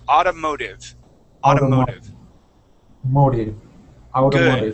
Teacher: both of those T's are going to sound like D's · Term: T sounding like a D